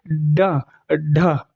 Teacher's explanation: जब आप ड और ढ का उच्चारण करेंगे तो जीवा ऊपर से नीचे झटके की ओर आती है। इसलिए इसको उत्क्षिप्त व्यंजन कह दिया गया है। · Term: उच्छिप्त व्यंजन